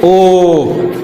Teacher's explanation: अब देखिए ओ आवाज यहां से आ रहा है, गला से आ रहा है ना, कंठ से, ओ यहां देखिए झंझनाहट होगा, कंपन होगा, है ना, ओ तो हम लोग ओठ को भी बना रहे हैं और कंठ से भी बोल रहे हैं, तो यहां से क्या होगा, उदयतो कंठोष्टम, है ना। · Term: कंठ ओष्ठ